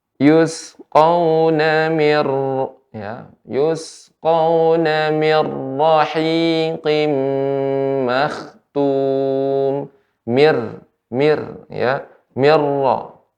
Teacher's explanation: Nun sukun bertemu dengan ra, nunnya hilang, dilebur ke huruf ra. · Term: idgham bila gunnah